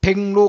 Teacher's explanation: 기역 뒤에 리을이 오니까 기역 뒤에 리을이 니은으로 바뀌고요. 다시 비음화 일어나서 백로 일어나요. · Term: 리을의 비음화